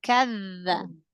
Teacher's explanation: Gesekan makhrajnya huruf dzal sedikit